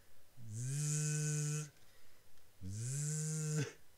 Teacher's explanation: So for example, something like this one, like the English Z, zzz, you can feel the vibration on your throat. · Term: voiced sound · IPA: [z]